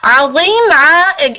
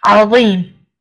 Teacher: Ayn is from the middle of your throat. And dha over here is full mouth, right? Dha is from huruf tafkhim, khussa dagtin qiz, right?